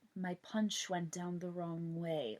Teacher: It almost sounds like they're just like talking with the teeth clenched shut. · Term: Shan-chan accent